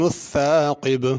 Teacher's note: ثاقب آخر میں قاف ہے بڑا، چھوٹا کاف نہیں پڑھنا، اور با پہ قلقلہ کرنا ہے۔